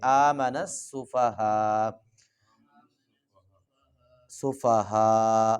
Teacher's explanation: کما آمن السفہاء، جی حمزہ جو ہے وقف کی حالت میں سائلنٹ ہو جائے گا، اگر وقف نہیں کرنا تو پھر آمن السفہاء، اور اگر وقف کرنا ہے تو حمزہ کو ہم گرا دیں گے